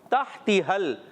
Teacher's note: ہا کی ادائیگی حلق کے درمیان والے حصے سے